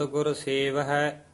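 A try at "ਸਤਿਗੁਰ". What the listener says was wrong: जेड़ा सात गुर ए ना पोला नहीं बोलना, सत गुर ऐ बोलना।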